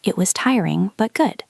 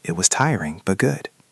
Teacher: my voice goes up on the word tiring and down on good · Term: intonation